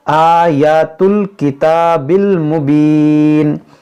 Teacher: حمزہ پر کھڑا زبر ہے، اس کو کھینچیں گے